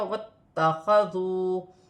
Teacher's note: تا مشدد ہے، دو مرتبہ پڑھا جائے گا، ایک واو کے ساتھ ملا کر پڑھا جائے گا، واتخذوا، اور ایک اپنی حرکت کے ساتھ ملا کر پڑھا جائے گا۔